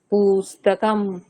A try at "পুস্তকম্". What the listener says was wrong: পুস্তকম নেই কিন্তু, পুস্তকম সব হ্রস্ব আছে।